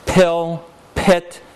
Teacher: Pill, pit, those pas are aspirated